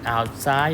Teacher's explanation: We have the word outside, and the stress is on the second syllable because it's an adverb